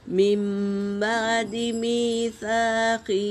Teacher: چھوٹے میم سے بدلیں گے نون ساکن کی آواز کو۔ من بعد میثاقہ، اس طرح ہم کو نون اور تنوین کی آواز، نون ساکن کی آواز اور تنوین کی آواز کو میم سے بدل کر پڑھنا ہے، اسے اقلاب کہتے ہیں۔